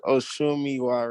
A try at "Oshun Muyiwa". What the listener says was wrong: Oshun Muyiwa. Miwa is an Orisha name, but mine is Muyiwa. Muyiwa.